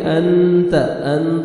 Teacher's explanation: نون ساکن کے بعد حروف اخفاء میں سے تا ہے، یہاں پہ آپ نے نوز میں ساؤنڈ لے کے جانا ہے ، تا کو باریک پڑھیں گے، انت، انت، طا میں نہیں